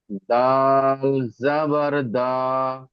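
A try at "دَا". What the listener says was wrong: দাল আলিফ জাবার আছে, দেখেন।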